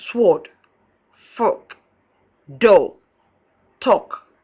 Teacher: Long O, back, half open, tense, and rounded, as in sword, fork, door, talk.